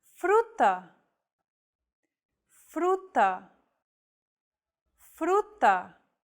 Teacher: this trill sound is done by lightly tapping the gum ridge behind your upper teeth with the tip of your tongue it should be a quick striking motion similar to the sensation